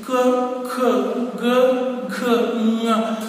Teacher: ಗಂಟಲಿನ ಸಹಾಯದಿಂದ ಉಚ್ಚರಿಸಲ್ಪಡ್ತಾ ಇರ್ತಕ್ಕಂಥ ವ್ಯಂಜನಗಳಿವು. ಕ, ಖ, ಗ, ಘ, ಞ ಅಂದ್ರೆ ಕಂಠ ಅಂತ ಹೇಳಿದ್ರೆ ಕೇವಲ ಕಂಠ ಅಲ್ಲ, ಬೇರೆ ಬೇರೆ ಸಪೋರ್ಟ್ ತಗೊಳುತ್ತೆ ಅಕ್ಷರಗಳನ್ನ ಉಚ್ಚಾರ ಮಾಡೋದಕ್ಕೆ, ಅದನ್ನು ಹೊರಡಿಸುವುದಕ್ಕೆ. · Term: ಕಂಠ್ಯಗಳು